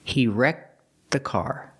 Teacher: The tongue goes up to make the T sound, but then links to the TH sound. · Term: link the sounds